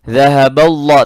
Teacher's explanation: Dhahabau, lamnya lamul jalalah, ini yang di tengah, ba-nya masuk ke lam. Lamul jalalah mufakhamah, tebal.